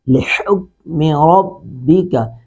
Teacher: کاف کو ادا کرتے وقت آواز کو چھوڑیں گے نہیں، یعنی آواز کو لوٹائیں گے نہیں